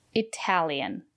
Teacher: The syllable after the letter T is stressed. We pronounce the letter T as T.